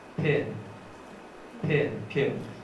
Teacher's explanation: so there is a burst and aspiration and the following vowel